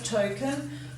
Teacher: give that a schwa sound at the end